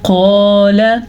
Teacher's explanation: قاف کو موٹا پڑھنا ہے کیونکہ قاف ہمیشہ ہی موٹی پڑھی جاتی ہے، اور پر پڑھیں گے اس کے لیے منہ کو بھر کے پڑھیں گے. جب ہم منہ کو گول کرتے ہیں تو لفظ خود بخود ہی موٹا نکلتا ہے.